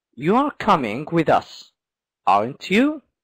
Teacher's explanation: at the end the voice is going up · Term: rising intonation